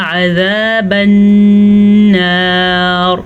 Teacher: नून पे शद है तो गुन्ना करना लाजमी है